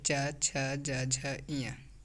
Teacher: जीभ का मध्य भाग तालु को स्पर्श करता है, जैसे च, छ, ज, झ, इया, इसे तालव्य व्यंजन कहते हैं।